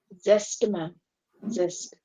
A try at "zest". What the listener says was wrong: Jest. Zest. Zest. I heard it. I heard the way you pronounced it. I heard it as just, just. It is za, like zest.